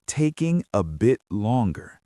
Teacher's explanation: We stress taking and longer. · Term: rhythm